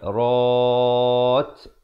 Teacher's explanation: diberikan hamas bunyi angin di akhirnya kerana waqaf